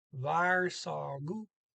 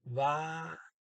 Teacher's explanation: You pronounce the two together as an SH, even if the R is at the end of one word and the S at the beginning of the next.